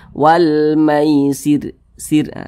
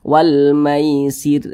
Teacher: huruf ro sukunnya ini dibaca tipis, dibaca tarkik. Jadi ini ditipiskan huruf ro-nya.